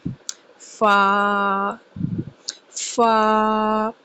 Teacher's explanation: اوپر کے دانتوں کا کنارہ اور نیچے والے ہونٹ کے گیلے حصے کو لگے۔ اوپر والے دانتوں کے کنارے جب نیچے والے ہونٹ کے گیلے حصے کو لگے تو فا کی ادائیگی کی جائے گی۔